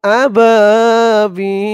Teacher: আবাবিল এখানে তিন আলিফ টান হয়েছে